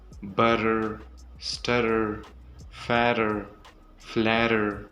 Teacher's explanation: The first one is the flap T. When the T sound comes between two vowel sounds, that T sound turns soft. It sounds like a soft duh sound.